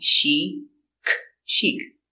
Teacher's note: Use the soft sound, sh. Use the long E sound